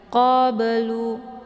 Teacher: Ba sukun yang terdapat di pertengahan kalimat dinamakan dengan qalqalaf sughra. Jadi cara bacanya dipantulkan dengan pantulan yang ringan